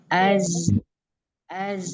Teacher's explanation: Az itu ada sifat sofir dan ada sifat rohwa